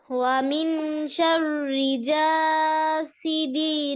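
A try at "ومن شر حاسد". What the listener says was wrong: না, এটা হা, হা। মিন শাররি হাসিদিন। হাসাদ। কলকলা করো সুন্দর করে, হাসাদ।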